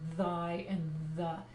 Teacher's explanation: this is the th sound that's voiced like in thy and the